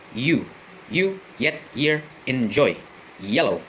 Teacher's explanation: when you try to articulate, example, you, the tongue, not the tip, but the body, rises up the hard palate. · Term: palatal